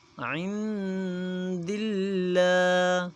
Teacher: عند اللہ، لفظ اللہ میں نے پہلے بھی بتایا کہ لفظ اللہ سے پہلے حروف پر اگر زبر یا پیش آ جائے تو لفظ اللہ کو موٹا پڑھا جاتا ہے، اگر لفظ اللہ سے پہلے حروف پر زیر آ جائے تو لفظ اللہ کو باریک پڑھا جاتا ہے۔ جیسے دال کے نیچے زیر ہے اس لیے لفظ اللہ کو باریک پڑھا جائے گا